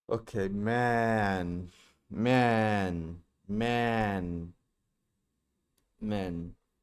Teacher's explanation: The word man takes a little longer because the vowel changes.